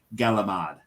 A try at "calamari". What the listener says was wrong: It's calamari. you want to say calamari. But you say the C, you know. But for some reason they say a G. Galamad. Like GALAMAD. Galamad. It's calamari.